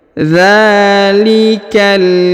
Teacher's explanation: Huruf dza dipanjangkan 2 harokat karena di atasnya terdapat alif kecil ya. Dzalikal, huruf ka langsung disambung ke huruf lam yang berharokat sukun